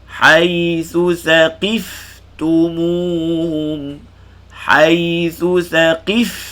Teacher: Sa ni mesti keluar lidah.